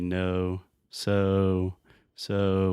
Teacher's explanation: this is a moving vowel where we start with O and we move to oo. So when we say own, it's a really long sound. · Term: long O sound